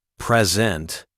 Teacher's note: the stress on the first syllable present means gift